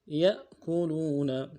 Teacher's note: یا کو حمزہ کے ساتھ ملانا ہے، حمزہ کے اوپر جزم ہے تو جھٹکا دیں گے